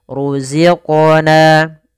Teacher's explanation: ada mad tabi'i kasrah bertemu dengan ya sukun. Panjangnya dua harokat.